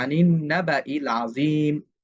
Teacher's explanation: হামজাতুল কতঈটা আমরা উচ্চারণ করতেছি, কিন্তু যেই আলিফটা আছে সেটা কিন্তু আমরা উচ্চারণ করতেছি না।